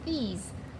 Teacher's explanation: These Our S kind of sounds like a Z